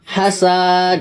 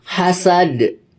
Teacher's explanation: Yang benar itu hasad. Dia tidak ada panjang karena tidak ada mat di sini.